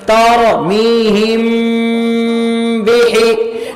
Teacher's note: میم ساکن کے بعد با آئے تو وہاں کون سا گنہ ہوگا؟ اخفا کریں گے، اخفاء شفوی ہے